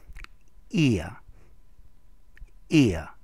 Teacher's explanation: It's a long E followed by a schwa sound. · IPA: /ɪəʳ/, ɪəʳ